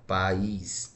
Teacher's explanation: A palavra país, ela é separada assim, ó, país. E ela é acentuada na última sílaba.